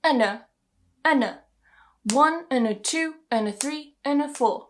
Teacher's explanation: stress the numbers because they're important here in this exercise but the and and ah are going to be weakened to un ER we're going to join them together